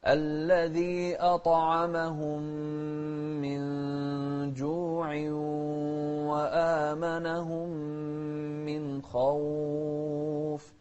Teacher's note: شوف الطاء ساكنة وهي مفخمة أيضا ومقلقلة